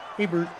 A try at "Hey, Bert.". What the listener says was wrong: More kind of whiny or nasal.